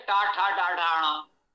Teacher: टवर्ग का उच्चारण स्थान मूर्धा है, जिह्वा मूर्धा को स्पर्श कर सकती है,